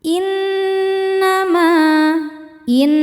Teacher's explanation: Di sini ada hukum gunnah musyaddadah atau nun musyaddadah atau wajibul gunnah karena nunnya ada tasydidnya. Cara bacanya didengungkan. Jadi dengungan pada nun itu bunyinya n ya, dan sengau kita tahan sampai ke hidung.